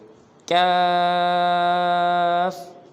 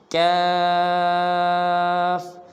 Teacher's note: اس کاف کو جو ادا کرنے کا مخرج ہے وہ یہ ہے کہ جہاں سے قاف ادا ہوتا ہے اسی جگہ سے ذرا منہ کی طرف ہٹ کر وہاں سے کاف نکلتا ہے